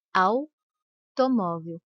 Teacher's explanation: a é pronunciado com mais intensidade que a letra U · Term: semivogal